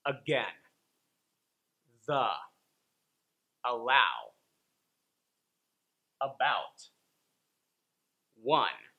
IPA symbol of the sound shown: ə